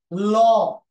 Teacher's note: এই ল ধ্বনি উচ্চারণের সময় জিহ্বার দুই পাশ দিয়ে বাতাস বের হয়ে আসে, এই জন্য একে বলা হয় পার্শ্বিক ধ্বনি